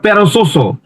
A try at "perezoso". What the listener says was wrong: না না, এটা জেড, জো